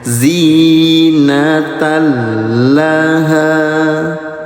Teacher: Leburkan bunyi tanwinnya ke huruf lam, ya, tidak ditahan, hanya dileburkan saja. Namanya idgham bila gunah.